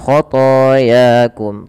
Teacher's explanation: th dan ya sama panjangnya dua harakat yaitu dibaca dengan bacaan mad thawii